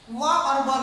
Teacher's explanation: इसके उच्चारण में व जब हम बोलेंगे तो हमारा दांत जो है सो ओष्ठ को स्पर्श करता है, इसीलिए दंतुष्ट वर्ण कहलाता है।